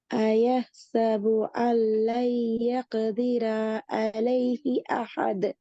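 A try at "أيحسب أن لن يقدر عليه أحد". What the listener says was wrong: يقدر. ஏன் அந்த என்று போகுது? அந்த டோனமா அந்த டோன் பேல இங்க நிக்கிற பிரச்சனை தான். நீங்க அந்த டோனுக்கே பழகிறீங்க. அயஹசபு அல்லை யகுதிர அலைஹி அஹது என்ற இந்த டோன் பெரிய பிழை.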